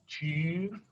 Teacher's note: it's an e tongue position and i just round my lips